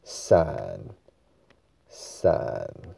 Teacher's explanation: 三是华语的第一声，但是我们这里要念台语的第三声